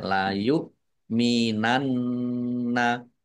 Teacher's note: Nun tasdid bacaan gunah atau mendengung ditahan